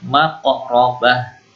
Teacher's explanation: qaf ini huruf qalqalah, mantul.